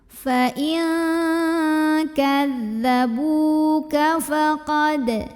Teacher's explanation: ba yang berbaris dhammah ini kita panjangkan 2 harokat saja. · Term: mad tabi'i